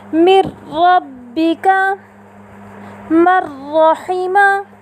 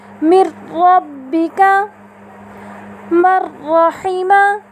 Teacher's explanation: ہم نے نون ساکنہ کو حرف را متحرکہ کے ساتھ اس طرح ملا کر ادا کیا کہ دونوں ایک ساتھ مشدد ادا ہوئے بغیر غنے کے